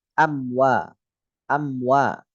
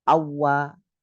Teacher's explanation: Nah, ini jangan sampai ini terjadi. Karena mim ketemu wawu bukan idgham bi gunnah, idhar masuknya.